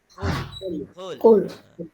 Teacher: Kul qaf dia berasal daripada pangkal lisan. Jadi bukan kul tapi Qul.